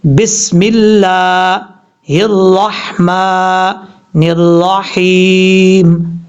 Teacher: اب یہ جو ہا ہے، را کے بعد ہا، اور یہاں پر آخری لفظ میں را کے بعد ہا ہے، یہ ہا بریک ہے، اور یہ وہ ہا ہے جس کا تعلق اس حلق کے ساتھ ہے جو حلق گلے کے درمیان ہے، جس کا گلے کے ساتھ تعلق ہے حلق کا، اس حلق سے یہ ہا ادا ہوتا ہے۔